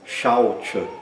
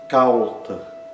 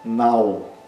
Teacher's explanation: Esse ditongo, ao, é longo, tem o dobro da duração de uma vogal curta. Assim como o ai também.